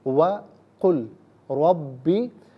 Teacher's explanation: وَقُلْ رَبِّ، قل میں ناظرین لام ساکن ہے، اسے را کے ساتھ ملائیں گے اور را کی آواز کو ادا کیا جائے گا